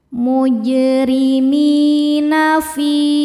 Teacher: Fi hukumnya mad tabi'i dhahiri sebab ada ya sukun sebelumnya kasrah. Cara bacanya panjang 2 harokat.